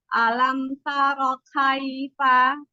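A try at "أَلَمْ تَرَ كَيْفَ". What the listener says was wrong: Cara mengambil kafnya masih berat ya. Alam taroka. Alam taroka.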